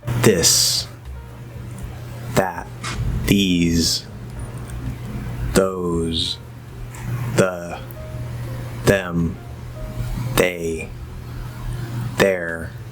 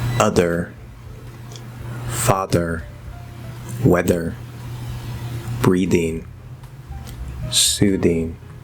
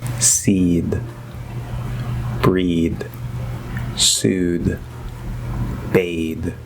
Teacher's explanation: for the voiced th we're going to use the dental d because d is voiced